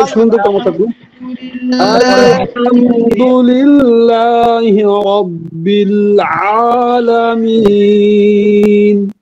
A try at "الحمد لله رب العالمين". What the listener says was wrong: যিনি পড়েছেন একটু আইনে চাপটা আরো কম দিবেন, আইনে বেশি চাপ দিয়ে ফেলেছেন, খেয়াল করে চাপ দিবেন।